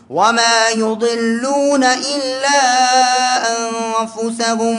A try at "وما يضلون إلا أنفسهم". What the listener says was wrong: الضاد ليست مقلقلة يا شباب ، حروف القلقلة خمسة.